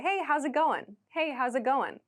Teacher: going there's not really a g sound at the end and we don't say how is it going we say how's it